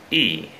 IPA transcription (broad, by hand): i: